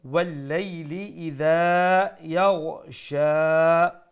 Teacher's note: থেকে দেখি from the top وَاللَّيْلِ إِذَا يَغْشَى make sure you pronounce the ghain with that softness and from top of the throat